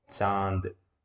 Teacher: तो मुंह और नाक दोनों से जब वायु बाहर आती है तो ऐसे स्वर क्या कहलाते हैं, अनुनासिक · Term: अनुनासिक स्वर